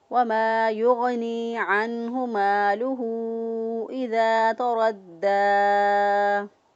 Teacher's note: دال کو مضبوط قوت کے ساتھ اس لیے ادا کیا کیونکہ اس کے اوپر شد ہے